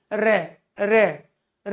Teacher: आपकी जीभ में क्या एक्टिव फंक्शन है, जीभ आपकी किस तरह एक्टिव है, तो वो कांप रही है, उसमें वाइब्रेशन है, कंपन है। इसी वजह से रे का उच्चारण करते समय जो फंक्शन बना हमारे मुख के अंतर्गत, उसकी वजह से लुढ़कना और कांपना नाम पड़ गया लुंठित और परकंपित है।